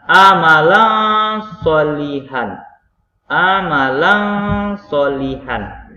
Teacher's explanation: ini cara bacanya sebenarnya adalah a Malang solihan Ah Malang solihan jadi disini seakan-akan didengungkan bunyi dari tanwin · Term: ikhfa Haqiqi